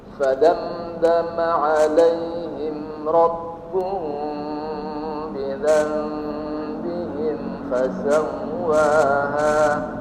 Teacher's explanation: Ya, sambil kita melihat ya, Rabbuhum bi, mim sukun bertemu dengan huruf ba, dia disebut dengan ikhfa syafawi. Ikhfa syafawi dibaca dua harokat agar suara dengungnya terdengar sempurna.